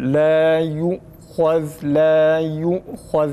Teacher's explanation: La yu'khaz değil arkadaşlar. Ü değil. U.